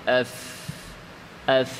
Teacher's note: যেমন ফায়ের মাখরাজ নিচের ঠোঁট উপরের দাঁত, তো উপরের দাঁতটা নিচের ঠোঁটে যে লাগবে, উপরের দাঁতকে যে আমি নিচের ঠোঁটে রাখবো, ভর করাবো, এটা দুর্বলভাবে করাবো, শক্ত করে না, দুর্বলভাবে।